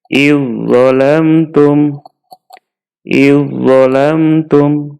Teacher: Zalnya kita masukkan ke huruf zo. Zo-nya kemudian ditasydid sehingga menjadi idzolamtum, idzolamtum.